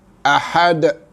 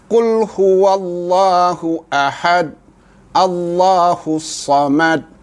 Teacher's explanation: bunyi lantunan dal yang kita matikan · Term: qalqalah